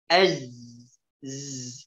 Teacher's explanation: Nah, za ini memiliki sifat rokhawah. Ya. Rokhawah artinya suaranya mengalir. Az, z. Ingat nafasnya tidak boleh keluar.